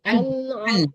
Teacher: Kalau ain itu keluarnya dari tengah-tengah tenggorokan.